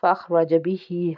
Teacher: ہا کے نیچے زیر ہے، کھڑی زیر، ایک الف کے برابر کھینچیں گے۔